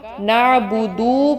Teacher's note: نعبدو جب پڑھ رہے ہیں تو آپ اس کو لمبا کر رہے ہیں، آپ اس کے آگے واو لگا رہے ہیں، جبکہ اصل لفظ میں اس کے آگے واو نہیں تھا۔